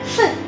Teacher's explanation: Saat kita bersuara V, kita menggesek bibir bawah kita dengan gigi atas. Lalu kita bersuara V.